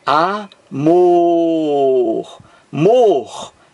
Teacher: Qual é a sílaba aqui mais forte aquela que você pronuncia com mais força é a última sílaba aqui ó a última amor Mor você pronuncia com mais força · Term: acento tônico